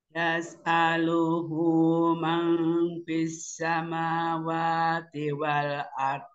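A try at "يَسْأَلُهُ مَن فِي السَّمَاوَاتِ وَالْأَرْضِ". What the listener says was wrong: Bagus, tinggal ifaknya ya. Dua harokatnya disempurnakan. Yas'aluhu man fis samawati wal ard.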